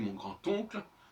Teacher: Quand je dis mon grand-oncle, on entend le T de la dentale finale du D.